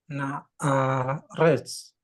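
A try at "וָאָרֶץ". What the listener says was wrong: Wah, bukan nah itu.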